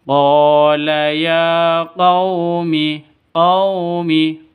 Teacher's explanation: karena ada Alif diawali dengan fathah ya quumi q ya quumi ya panjang dua ketukan karena ada tanda berdiri di atasnya